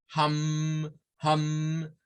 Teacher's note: Si ustedes hacen un sonido hum, van a sentir la vibración porque termina en la M.